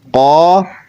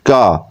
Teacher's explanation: قاف وہ زور سے اوپر گلے کی طرف جائے گا اور نرم حصے سے زبان اوپر لگے گی، تو پھر یہ قاف ادا ہوگا. اور کاف، تو کاف جو ہے تھوڑا سا آگے سخت حصے کی طرف زبان لگے گی. اور قاف میں قلقلہ بھی ہوگا، تو ہم اس کو ادا کریں قا کا، قا کا، قا کا.